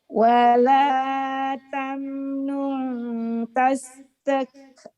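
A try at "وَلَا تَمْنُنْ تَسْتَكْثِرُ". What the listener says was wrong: Sir. Saya nunggu sirnya nggak keluar. Nunggu sirnya nggak keluar. Wala tamna tastakthir.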